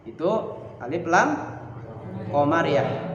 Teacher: Yaitu alif lam menghadapi huruf qamariyah yaitu fa, maka dibaca idhar, dibaca jelas. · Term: idhar qamariyah